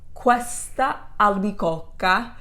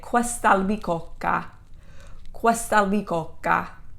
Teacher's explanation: So in order to keep that flow and the the nice rhythm of the language, because Italian is so beautiful, you can drop that A from questa and put an apostrophe and say quest'albicocca